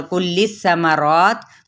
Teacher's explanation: تا پہ ہمس کیا اور ساتھ میں وقف کر دیا تو وقف بالاسکان